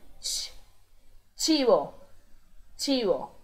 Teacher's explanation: E o CH tem o som de tch, como se fosse um espirro. Tch, chivo, chivo.